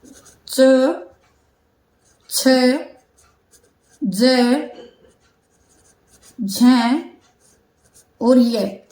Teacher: यह हमारे जो मुख का जो तालू वाला हिस्सा है तो वहां जो है हमारी जीव स्पर्श करती है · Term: च वर्ग